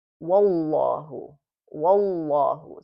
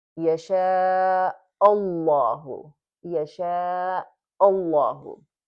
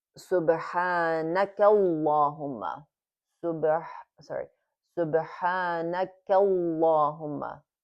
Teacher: So here we have a fatha, a fatha, a fatha here on all of these words. So right before the lafzul jala, the name of Allah, before there's a fatha. So in this case, we read it as heavier pronunciation.